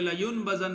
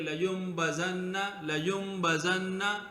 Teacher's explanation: اسی طرح اب لیمبزن لیمبزن، ینبغی ینبغی چھوٹا سا میم نظر آ رہا ہے، لیمبزن کہ نون ساکن کے بعد جو ہے با مطلق، نون ساکن کے بعد با مطلق آئی تو اس کو میم کے ساتھ بدلنا واجب ہوتا ہے. تو ہم یہ نہیں پڑھیں گے لینبزن نہیں پڑھیں گے، بلکہ لیمبزن لیمبزن.